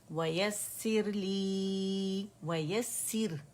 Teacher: سا کے نیچے کسرہ ہے اور را باریک پڑی جائے گی اور جماؤ دیں گے سین کو